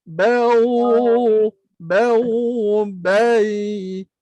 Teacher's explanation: Lidah tak boleh terangkat. Kalau terangkat jadi isti'la. Huruf waw dengan huruf ya dia duduk istifal.